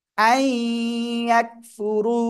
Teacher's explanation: রর উপরে পেশ মোটা আওয়াজে পড়তে হবে।